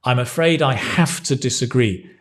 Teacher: not I've, because the stress is on the have.